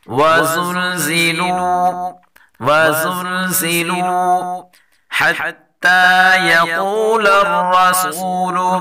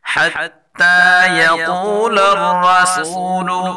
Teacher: قاف اور را دونوں کو پر پڑھیں گے